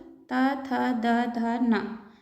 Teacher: ये दंत से बोले जाते हैं, इसलिए इन्हें दंतव्य व्यंजन कहते हैं।